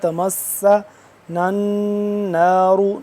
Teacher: تمس سین سیٹی کے آواز اس پہ مشدد ہے